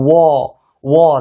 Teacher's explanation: तो देखिए वाकारास्यानाम मतलब वो का उच्चारण स्थान दंतोष्ठ, यानी कि दांत से भी बोलते हैं, वो दांत से भी बोल रहे हैं और ओठ से भी बोल रहे हैं, ओष्ठ से भी बोल रहे हैं, तो इसका उच्चारण स्थान क्या होगा?